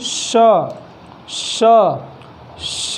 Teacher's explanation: हमारी जो जिह्वा है वो रगड़ खा रही है ऊपर मूर्धन्य के ऊपर, और उसके बाद जो है एक गर्म हवा जो है हमारे मुख से बाहर निकल रही है। तो यही जो जिह्वा है हमारी रगड़ खाने से जब हवा बाहर निकलती है, ऐसे जितने भी हमारे वर्णमाला में वर्ड हैं उन्हें ऊष्म व्यंजन में रखा गया है।